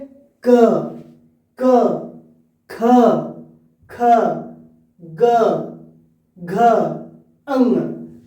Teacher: जीभ के पिछले भाग को कोमल तालु से जोड़कर ध्वनि बनता है। अभी आपने देखा इससे पहले कठोर तालु था, अब है क्या है, कोमल तालु। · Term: वेलर